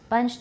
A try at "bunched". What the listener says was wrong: You have too much. Open your mouth wider.